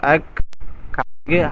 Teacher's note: উচ্চারণ হবে এভাবে আল্লাহু আল্লাহু এরপরে দেখেন আকবার কাফ জবর আক হালকা বাতাস বের হবে যেহেতু কাফটা হামসের হরফ এজন্য একটু বাতাস বের হবে